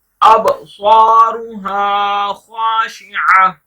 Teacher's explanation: स्वाद को मोटा पढ़ना है, बा पर कलकला करेंगे